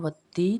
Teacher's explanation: یا مدہ کو ہم نے 1 الف جتنا لمبا کرنا ہے